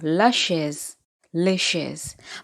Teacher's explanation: Plural formation of French, as in English, the plural is generally formed by adding an S to the end of the singular form of the noun. But note, however, that the S is not pronounced. Yes, in spoken language, it is only the article which will only indicate that a noun is singular or plural.